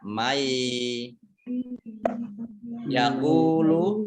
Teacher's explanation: Baca gunah tahan 2 harokat, nanya nun fathah alif ini mat tobi'i panjang 2 harokat, mai nun sukun bertemu dengan huruf ya, ini bacaan idgham di gunnah ya. Idgham di gunnah yaitu masuk dengan mendengung